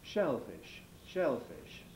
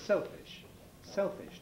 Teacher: So we get more drawn out shell fish, exaggerated, versus clipped selfish. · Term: prefortis clipping